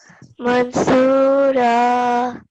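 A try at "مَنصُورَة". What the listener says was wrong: Yes, okay.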